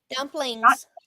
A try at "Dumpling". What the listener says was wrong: Not dumplings or dumplings with a million Z's.